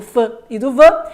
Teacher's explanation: envolvem os lábios de baixo e os dentes de cima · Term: labiodentais